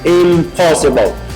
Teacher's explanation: You have to make the pronunciation easier, so it changes to m, because m and p, they are pronounced almost the same way, in the same place of articulation, which is bilabial